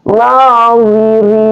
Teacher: ra tarful lisan yang tarkik atau dibaca tipis